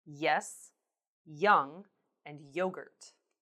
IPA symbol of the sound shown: j